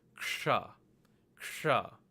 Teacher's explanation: we have ka, which is a guttural sound, combined with the retroflex sha sound to get ksha